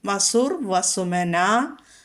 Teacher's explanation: അപ്പോൾ അവിടെ വസുഹു ഉക്കാരം വന്നു. വിസർഗത്തിന് മുമ്പ് ഉക്കാരം വന്നു. വിസർഗശേഷം വാ വന്നിരിക്കുന്നു. അപ്പോൾ അവിടെ രേഭം വരും.